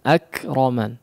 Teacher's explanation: Hams dan sifat syiddah daripada huruf kaf yang bertanda sukun